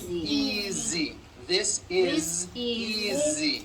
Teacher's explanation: Easy. Again, the S is like a voiced Z